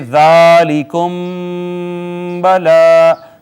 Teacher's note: میم ساکن کے بعد با آ گئی ہے، لہٰذا یہاں پر ہوگا اخفاء شفوی، چھپا کے پڑھیں گے